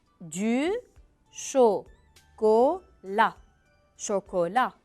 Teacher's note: en français chocolat on ne prononce pas le T